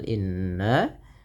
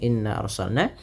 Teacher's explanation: ditahan bunyi suara nnya dipanjangkan dua harakat karena ia terdapat bacaan ghunah